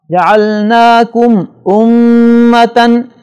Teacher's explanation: جعلناکم امتن، میم کے اوپر جزم ہے، اس کے بعد حمزہ آ رہا ہے، لہٰذا یہاں میم کو ظاہر کر کے پڑھیں گے، اس میں غننے کی آواز نہیں ہوگی